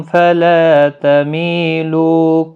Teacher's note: لا الف مدہ ہے، لو واو مدہ ہے، دونوں کو 1 الف کی مقدار کے برابر کھینچیں گے۔ می بھی یا مدہ ہے، اس کو بھی 1 الف کی مقدار کے برابر کھینچیں گے۔